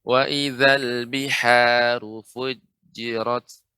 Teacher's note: Perhatikan di sini biha, ya Ibu, dibaca dengan tengah tenggorokan atau ha kecil.